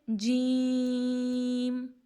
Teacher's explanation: وسط زبان اور اوپر کا تالو، یعنی زبان کا درمیان کا حصہ اور اوپر کا تالو